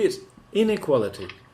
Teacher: when you have inequality, you put the emphasis on the in the word stress, so that people can hear it, so they can understand that it's not equality, it's inequality.